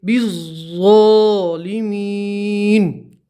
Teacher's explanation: با کو سیدھا ضاد سے ملائیں گے، الف اور یہ الف نہیں پڑھیں گے